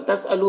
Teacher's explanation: तसअलू में वाव मद्दा है, इसे एक अलिफ के बराबर खींचेंगे।